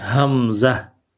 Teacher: کو لمبا نہیں کرنا، حمزہ کو ہم لمبا نہیں کریں گے، اس کو جو ہے وہ بالکل نارمل اور انتہائی جو ہے وہ کم آواز میں پڑھیں گے